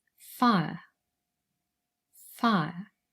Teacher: we have the diphthong i and our schwa sound er and together the word is fire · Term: triphthongs